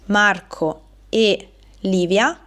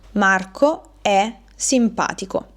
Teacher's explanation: Passiamo ora all'ultima coppia di monosillabi, che è quella formata dalla congiunzione e, suono chiuso, e il verbo terza persona singolare è il verbo essere, quindi lui, lei, è.